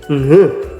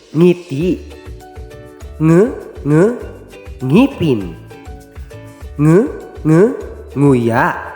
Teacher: Ang nangyayari ay hindi sa bibig lumalabas ang hangin kundi sa ilong, kung kaya't ang paraan ng artikulasyon kung paano bigkasin ang ponemang ito ay sa pamamagitan ng pailong na pamamaraan.